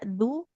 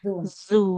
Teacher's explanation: huruf zalnya nggak boleh jadi da ya. Tidak du, tapi Zu zu ya.